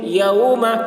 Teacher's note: یو، میم زبر ما، میم کے اوپر زبر ہے، زبر کو جلدی پڑھیں، تھوڑا بھی نہ کھینچیں